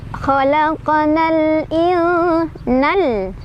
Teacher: Cuman karena mad tabi'i tersebut menghadapi huruf yang sukun ya, yaitu di depannya, di lamnya, maka mad tabi'inya sudah tidak dibaca panjang lagi, melainkan kita langsung masukkan atau kita langsung izharkan ke huruf yang sukunnya ya.